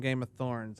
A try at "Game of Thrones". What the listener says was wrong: It's Game of Thrones, by the way. Yeah, you said Thorns.